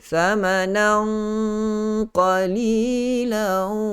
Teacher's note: Kalau kita dengung ikhfa dengan huruf qaf itu yang mempunyai sifat tebal, tentu sekali bunyi tanwin ataupun bunyi dengung itu juga sedikit sebanyak memberikan ketebalan pada bunyi gunnah tersebut. Patutnya kalau kita baca dengan gunnah ikhfa huruf lain, thamanan, thamanan, begitu saja, tidak ada masuk dalam elemen huruf qaf itu.